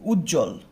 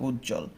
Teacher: তো এই উজ্জ্বল বানানের মধ্যে ব থাকার পরও আমরা কি করি না, বটা উচ্চারণ করি না।